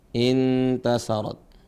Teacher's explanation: cara bacanya adalah menyamarkan huruf nun nun mati ini bertemu dengan huruf ta ditahan dua harakat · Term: ikhfa